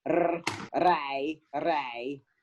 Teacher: I made a decision that R's are rolled